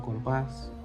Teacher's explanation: Como punto tenemos palabras agudas. La sílaba tónica recae en la última.